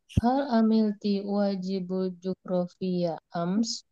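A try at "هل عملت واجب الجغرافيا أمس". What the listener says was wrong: di sini ada al, jadi dia disambung. Hal amilti wajibal.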